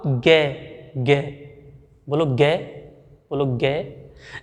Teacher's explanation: गे को बोलते समय हमारी जो कंठ ध्वनि है वहाँ कंपन होती है। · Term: सघोष